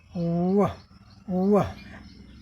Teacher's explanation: इस ध्वनि के उच्चारण में लिप राउंड हल्का सा राउंड होता है